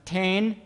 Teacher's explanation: for the initial consonant cluster, the child produced a [t] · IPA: [ten]